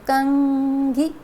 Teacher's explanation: अनुस्वार में पहले हमें स्वर सुनाई देगा और बाद में हमको न का साउंड सुनाई देगा